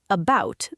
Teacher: About, the A is a schwa.